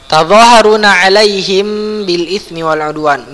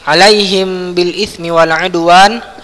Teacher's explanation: Mim ketemu ba, maka dia ikhfa syafawi. Ini juga ditahan ya. Mulutnya ditutup tanpa ditekan ya, tanpa ditekan atau dikerutkan.